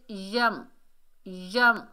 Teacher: آفا میں، آفا میں، آگے دیکھیے یا کے اوپر زبر، آگے میم ساکن ہے، یا کو میم سے ملائیں گے، میم ساکن کے بعد حرف با اور میم کے علاوہ 29 حروف ہجا میں سے جو بھی حرف آ جائے تو میم کا اظہار کیا جاتا ہے۔ اخفا غنہ کچھ بھی نہیں ہوگا، اظہار شفوی کا قاعدہ ہوگا۔ جیسے یم، یم یعنی میم کو ظاہر کر کے پڑھیں گے۔